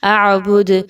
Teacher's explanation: اعبد، جب دال پہ آپ جزم لگا کے وقف کریں گے تو وقف کی صورت میں دال پر قلقلہ کیا جائے گا، یعنی دال کو ہلا کے پڑھا جائے گا۔